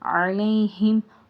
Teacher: அலைஹிம் சுக்குன் பெற்ற யாவுக்கு முன்னாடி ஜபர் வந்திருக்கனால இது யாயே லீன், நீட்டாமல் ஓதணும்.